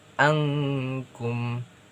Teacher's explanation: Jadi huruf N itu tidak tidak lagi disebutkan secara jelas tapi lebih ke ng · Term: ikhfa